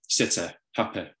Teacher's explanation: in Manchester, a lot of speakers have a much laxer vowel where the tongue is even lower in the mouth, more like an eh sound. So something more like sitter, happy, which is very characteristic of Mancunian accents.